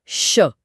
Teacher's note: हवा मुंह के किसी हिस्से से रगड़ या घर्षण खाकर बाहर निकलती है, जिससे एक हल्की सी गर्माहट या सीटी जैसी आवाज पैदा होती है। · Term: ऊष्म व्यंजन